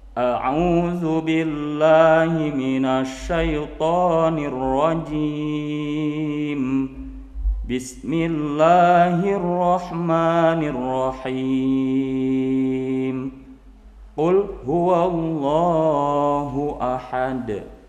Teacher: semuanya diputus antara ta'ud, basmalah dan surat, tidak ada yang disambungkan. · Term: qat'ul jami